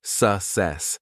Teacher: The stress is on the second syllable. · To say it correctly, pronounce it as s e e k k s e s. It begins softly with s and ends with a strong, confident sess.